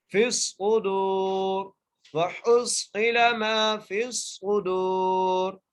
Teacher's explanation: یہاں پر را موٹی کر کے پڑھی جائے گی، فی الصدور وحصل ما فی الصدور، ٹھیک ہے۔